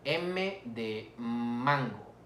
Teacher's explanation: son nasales obvio porque interrumpe o interviene la nariz para la producción de dicho sonido